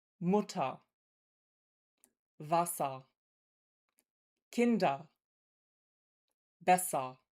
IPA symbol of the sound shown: ɐ